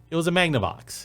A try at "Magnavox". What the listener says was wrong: Are you saying that? Is that what you're saying? saying magma with a B somewhere.